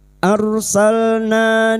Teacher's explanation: na fathah diikuti alif dua harakat kita panjangkan mad thbi'i